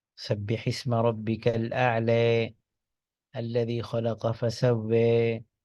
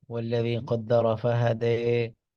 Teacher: الف کو اس طرح سے پڑھنا جیسے گویا آپ تھوڑا سا اس کو مائل کر رہے ہیں یا کی طرف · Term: ایمالا